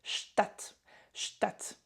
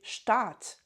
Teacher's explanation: vous remarquez un A court, Stadt, Stadt, d'accord? Il existe aussi un mot avec un A long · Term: voyelles longues